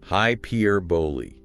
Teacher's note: Hyperbole. Stress on the second syllable, and it ends with an E sound.